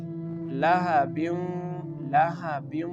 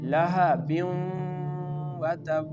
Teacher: the tanween is merging with the letter waw and giving the sound lahabim. Here double kasra is present below the ba, and this tanween making the connection with the letter waw.